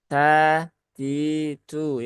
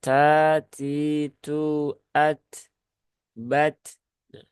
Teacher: huruf ta ada hamesnya Hames keluar udara sehingga dia meyakini bahwasanya membaca huruf